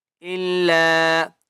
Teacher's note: لام کو تین الف کی مقدار کھینچ کر پڑھیں گے